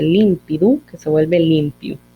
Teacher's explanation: En este caso tenemos una síncopa de dental intervocálica, que se pierde